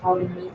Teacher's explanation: looking at the silent R, like for example in farmers